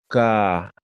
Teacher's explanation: Ahora digo velares, ya es casi entrando hacia la garganta